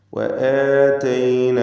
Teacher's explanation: അലിഫുകളൊക്കെ 2 ഹറക്കത്തിൻ്റെ അളവിൽ കൃത്യമായി ദീർഘിപ്പിച്ചുകൊണ്ട് ഉച്ചരിക്കുക.